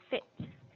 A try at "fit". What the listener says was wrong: Do not stick up your tongue. It sounds like a TH.